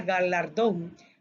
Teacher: esta palabra suena fuerte en la última sílaba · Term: palabra aguda